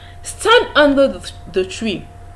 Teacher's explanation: The pitch of your voice doesn't need to rise. It should rather drop. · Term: falling tone